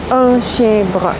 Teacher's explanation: in Canada and in Quebec, we've kept these four nasal vowels